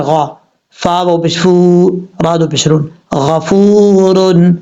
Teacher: غفور، غین زبر غا، فا و پشفو، راد و پشرون، غفور، واو ساکن ہے، واو ساکن سے پہلے پیش ہے اس لیے واو مدہ ہے، 1 الف کی مقدار اس کو لمبا کر کے پڑھیں گے